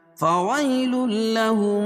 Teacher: تنوین کے بعد ادغام بلا غنہ کے 2 حرفوں میں سے لام ہے، ادغام ہوگا لیکن غنہ نہیں ہوگا